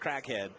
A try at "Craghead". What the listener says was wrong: And it was Craghead, not Crag. It sounded like Crackhead.